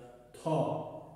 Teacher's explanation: Ta hərfini tələffüz edərkən dilin ucu yuxarıdakı damağa dəyməklə tələffüz olunur. Özü də qalın şəkildə ta.